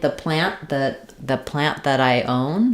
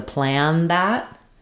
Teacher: plan that I own um versus the plant that I own you still need to mark that t with that unreleased t or it's going to sound like an N sound